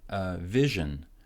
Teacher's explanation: Vision. Stress goes in the first syllable, and then the second syllable gets no stress, so it's short.